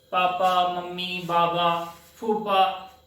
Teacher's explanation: अगर हम होठों को आपस में स्पर्श नहीं करते हैं तो प, फ, ब, भ ये वर्ण उच्चारित नहीं होते हैं, इसलिए इन वर्णों का उच्चारण स्थान होता है ओष्ठ।